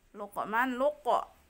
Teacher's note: Luqman, luqa itu bacaannya harus mantul, dipantulkan huruf huruf qafnya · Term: qalqalah sugro